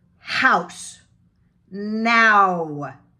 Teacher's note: Ow. Like it's a diphthong. It starts with ah and becomes ooh. Ah. Ah, ooh.